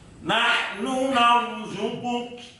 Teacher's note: perpindahan makhraj qaf ke kaf yang karena sukun tadi itu kafnya itu perlu perhatian yang lebih. Jangan sampai menjadi ikut-ikutan qalqalah.